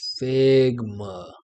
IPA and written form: ˈfɪɡ.mə (Figma)